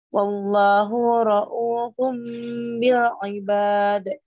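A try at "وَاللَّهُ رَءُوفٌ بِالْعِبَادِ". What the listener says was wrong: Coba bunyinya enggak boleh ditarik, wallahu ra'u, monggo, wallahu ra'u,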